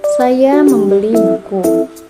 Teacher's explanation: tekanan pada kata buku Maksudnya yang saya beli memang buku bukan selain daripada buku selanjutnya